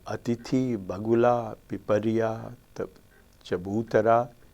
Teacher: The stress is always on the antepenultimate syllable. That is the 3rd from the right.